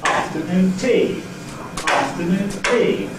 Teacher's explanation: this lexical stress on ‘-noon’ here shifts in this phrase to the first syllable · So if I put it in a phrase like that, very English phrase, like that, I will not make the last syllable of noon stronger than the other syllables. I will make the first syllable of afternoon stronger and say afternoon tea, afternoon tea, and not afternoon tea. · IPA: /ˈɑːftənuːn ˈtiː/